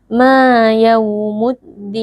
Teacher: Mad Thobi'i karena ada Alif yang sebelumnya berharakat fathah dibaca panjang dua harakat